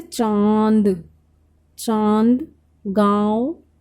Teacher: जो हमारी हवा निकल रही है वो हमारी नाक और मुंह दोनों से निकल रही है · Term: अनुनासिक